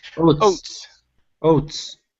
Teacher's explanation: Instead of woats, it's O. Start off with an O sound only.